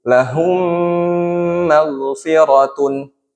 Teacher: Mim sukun bertemu mim dibaca melebur dengan suara ditahan. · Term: idgham mimi